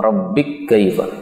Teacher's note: ini kaf ketemu dengan kaf boleh idgham